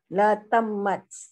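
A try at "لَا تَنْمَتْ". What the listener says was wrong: Idhar Ibu. La tanmat. Nunnya harus nampak terdengar. Seperti dunia, sinwanun, kinwanun.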